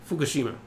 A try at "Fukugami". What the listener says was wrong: It's not Fukushima. Shima? You did that with Tsuki to Tsukishima.